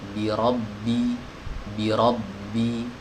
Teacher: Ba tidak punya hams ya. Ba sifatnya jahar. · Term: huruf ba